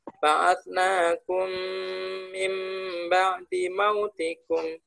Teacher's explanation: maka rangkap mim dibaca rangkap atau double dan harus mendengung atau harus didengungkan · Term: idgham mimi